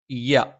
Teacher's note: യ നാവിന്റെ മധ്യഭാഗം മേലെ അണ്ണാക്കിലാണ്